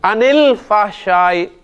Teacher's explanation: ان کے نون ساکن کو زیر دے کے ملائیں گے